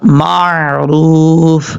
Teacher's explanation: میم کے بعد جو عین ہے اس کو نارمل طریقے سے پڑھنا ہے، جھٹکے کے ساتھ نہیں پڑھنا بلکہ معروف، اس طریقے سے۔